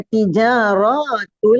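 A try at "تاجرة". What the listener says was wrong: Nah, kenapa tijaron? Kenapa ti kasrotaknya? Tajirotul.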